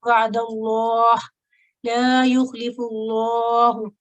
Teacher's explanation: لام الجلالہ صرف فتح اور دمہ کے ساتھ آئے تو ہم نے اس کو تخفیم کے ساتھ پڑھنا ہے، موٹا پڑھنا ہے